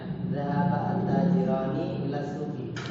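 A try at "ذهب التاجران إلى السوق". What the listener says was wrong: ya, jadi zahabanya nggak panjang. Tadi kan zahaba at-tajirani ila suqi. Salah tuh, harusnya zahaba.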